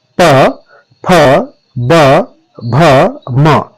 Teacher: यदि आप उच्चारण करके देखेंगे तो आप खुद महसूस करेंगे कि पहले आपके होठ मिलते हैं और फिर खुलते हैं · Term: ओष धनिया, ओष्ठ ध्वनियां